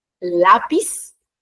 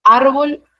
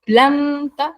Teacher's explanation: es decir se carga la voz en la penúltima sílaba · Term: palabras graves